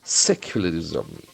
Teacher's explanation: Secularism, as we know, the accent falls from the 1st syllable.